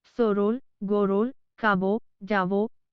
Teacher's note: बांग्ला में अ स्वर का उच्चारण हिंदी अ के जैसा नहीं होता। वह अ और ओ के बीच जैसा होता है। बांग्ला में लिखते हैं सरल, गरल, खाब, जाब, करीब, लेकिन इनका उच्चारित रूप होता है सोरोल, गोरोल, काबो, जावो की तरह।